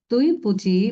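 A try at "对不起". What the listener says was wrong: কিন্তু এখানে এটা কোনো টোনই নাই, এটা neutral tone. So neutral tone আরো তাড়াতাড়ি বলি, আরো তাড়াতাড়ি বলতে হবে। হ্যাঁ, তুই পুছি। হ্যাঁ, এরকম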